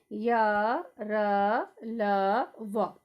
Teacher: इन व्यंजनों के उच्चारण में बच्चों जीभ का पूरा स्पर्श मुख के किसी भाग से नहीं होता है, यानी कि ये अंदर अंदर से, मतलब इसमें आप जब बोलोगे तो जीभ जो है आपके मुंह के किसी भाग को छुएगी नहीं। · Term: अंतःस्थ व्यंजन